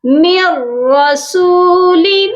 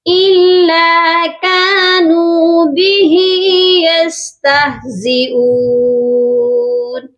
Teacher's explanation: واو مدہ ہے، اس کو بھی ہم نے ایک الف کے برابر لمبا کر کے پڑھنا ہے